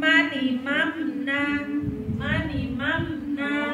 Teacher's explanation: Tapi kalau mim sukun bertemu dengan huruf nun itu ya, di situ huruf nun itu tidak didengungkan, dia jelas ya.